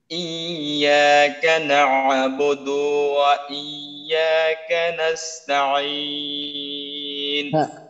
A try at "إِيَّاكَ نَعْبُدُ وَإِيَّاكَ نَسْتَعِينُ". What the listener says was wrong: عين عين অত কষ্ট করার দরকার নেই আরো একটু যদি আপনি হালকা করেন তাহলে আরো সুবিধা হবে إياك نعبد وإياك نستعين